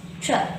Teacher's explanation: Ex-tr-vert. The second syllable here contains a schwa.